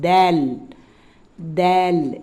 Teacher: நுனி நாக்கு அதிலிருந்து மேல் பல்லினுடைய மேல் பகுதி உள் மேல் பல்லினுடைய உள்பகுதியில டச் பண்ணி வரும்